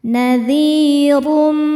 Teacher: minhunazi dzi hukumnya mad thobii zohiri sebab ada ya sukun sebelumnya baris kasrah cara bacanya panjang dua harakat nadirum huruf ro dibaca tafkhim karena berharakat domah tanwin dibacanya tebal